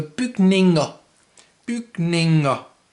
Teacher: To say buildings in plural, like in English, you add something to the end, but it's not an S this time. It's ER, which in Danish is pronounced, in this case, A.